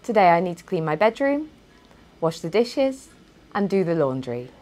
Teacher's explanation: for the first two items my intonation rose, whereas on the last item my intonation fell to indicate that I'd finished speaking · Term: falling intonation